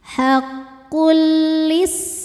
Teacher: Selanjutnya ada idgham bila gunah karena ada tanwin dommah menghadapi huruf lam. Cara bacanya tanwinnya dileburkan ke lam. Tidak perlu ditahan, tidak disertai dengung.